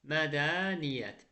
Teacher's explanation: Mədəniyyətdə qoşa yi iyyətin tərkibindədir. Y-nın biri tələffüzə düşəcək